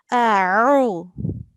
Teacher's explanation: You know we have ayn here, so we have to pronounce it with a thick sound.